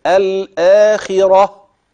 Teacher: الاخره لا دي تاء مربوطه لا تنطق تاء الا عند الوصل اما اذا وقفت تبدل هذه التاء المربوطه هاء